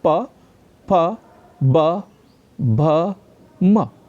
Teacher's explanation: जिन व्यंजनों के उच्चारण में दोनों ओष्ठों द्वारा श्वास का अवरोध हो जाता है, हवा रुक जाती है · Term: ओष्ठ व्यंजन